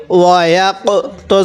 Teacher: কফটা একটু ধাক্কা দিয়ে পড়বো কারণ কফটা হলো কলকলার হরফ